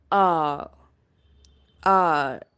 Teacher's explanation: it is mid open back unrounded vowel